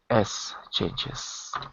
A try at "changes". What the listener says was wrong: With a Z. With a Z. It's written with an S, but the sound is like a Z.